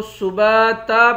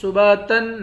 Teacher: دو زبر کے بعد الف ہے، یہاں پر وقف کریں گے تو سباتا پڑھیں گے، سباتن نہیں پڑھیں گے۔